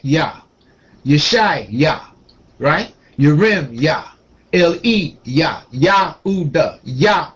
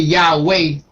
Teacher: we've been trained to pronounce it with the w w sound but it's silent